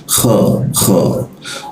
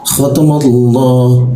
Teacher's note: Ingat di bahasa Arab tidak ada huruf o, ya, adanya a i u, ya, tidak ada o. Nah, huruf kha memang terdengar o. Itu suaranya terdengar o, tapi bibir kita tetap a, ya, kha. Jadi seperti itu, keluarnya kha tapi bibirnya a, jadi keluarnya seperti ini, kha.